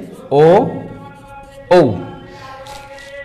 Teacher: এদের উচ্চারণ স্থান হচ্ছে কণ্ঠ আর হচ্ছে ওষ্ঠ